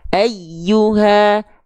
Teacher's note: Ayyuha harus ngalir, hurufnya sifatnya rokhawah. Ayyuha, nggak boleh ayyuha.